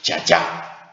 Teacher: And in the Wu version, we have not only, of course, this voiced initial zh, but we also preserve the vowel even from the ancient pronunciation